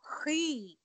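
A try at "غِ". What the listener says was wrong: Ghi. Don't make it close to the kha, okay? Ghi.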